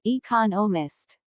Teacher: There are 4 syllables in economist, with the stress on the second syllable